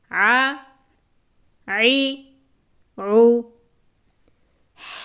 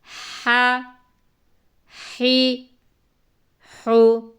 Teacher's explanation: حا زبر حا، حا زیر حی، حا پیش حو، حا، حی، حو۔ حلق سے آواز نکالنی ہے، عین میں بھی اور حا میں بھی، حلق کے درمیان سے